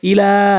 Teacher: লাম এক আলিফ টানবেন মদের হরকতের কারণে। মদের হরকতের পরিচয় হচ্ছে খারা জবর খারাজের উল্টো পেশ থাকলে এক আলিফ টেনে পড়বেন।